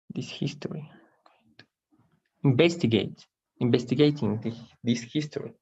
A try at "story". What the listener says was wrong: Story. This story. Recuerda, hay una diferencia entre history con la H y story. Contienes una S al principio, arrastra la S. Story.